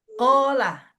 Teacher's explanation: huruf kof keluar dari pangkal lidah terakhir